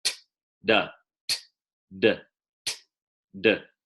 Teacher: same sound, unvoiced, then voiced. T, d. Okay, so a voiced T is a D.